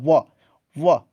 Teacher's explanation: दंत और ओष्ठ से, दंतोष्ठ से व होगा